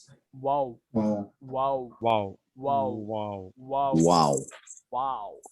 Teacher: एक मिनट, वाव का कहाँ है, यहाँ है देखो, वाव होठों को गोल करने से निकलता है